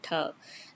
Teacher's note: your tongue is actually rolled in a curled position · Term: retroflex